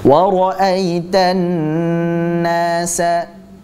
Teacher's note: Di situ ada nun tasydid. Kita baca dengan hukum gunnah. Dibaca gunnah, kita panjangkan gunnahnya.